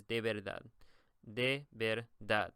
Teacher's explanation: the emphasis is going to be on the dad